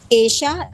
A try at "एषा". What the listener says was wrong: एशा हमें विसर्ग नहीं है, विसर्ग नहीं है। वो शायद बोलने में हाँ, एशा में, एशा में। एशा है।